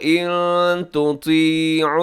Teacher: نون ساکن کے بعد تا ہے تو یہاں اخفا کریں گے، آواز کو ناک میں چھپائیں گے